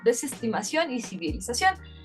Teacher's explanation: El ceseo puede ser comprendido como el mismo sonido para la C, la S y la Z.